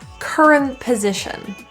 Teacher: have another word after it and it starts with a consonant then we'll have an n t and another consonant sometimes we just drop that t